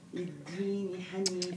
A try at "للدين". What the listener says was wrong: لا الدال فيش فيها همس